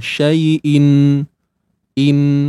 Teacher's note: kita ambil dia punya sifat ghunnah tu makhraj Nun tak ada dah